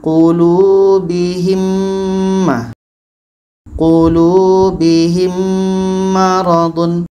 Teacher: Kita masukkan bunyi mim ke mim karena huruf yang sama sudah pasti masuk dan diiringi dengan dengung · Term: idgham ml